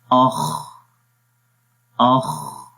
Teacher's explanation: یعنی انفتاح میں آواز کا انحصار زبان اور تالو کے درمیان میں نہیں ہو رہا بلکہ آرام سے آواز باہر نکل جاتی ہے